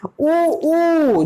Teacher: तो वृत्तमुखी, वृत्तमुखी जिसमें ओठ पूरी तरह से वृत्तामुखी का आकार ले ले। ऊ जब हम बोलते हैं बेटा तो ओठ जो होता है पूर्णतः वृत्तामुखी का रूप ले लेता है